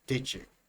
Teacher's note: A j sound here with d and y together. Did you? This is the IP for a j sound.